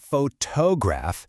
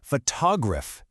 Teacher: The beat is on that first syllable. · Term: word stress